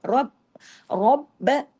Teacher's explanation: रा हैवी होगा, क्यों, जबर की वजह से, बा पे तशदीद है, बा डबल होगा लेकिन बा बारीक होगा